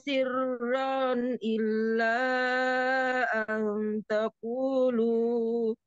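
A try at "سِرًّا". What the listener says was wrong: Sirran, jangan dipanjangkan sirran.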